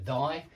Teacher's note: That TH in thy is voiced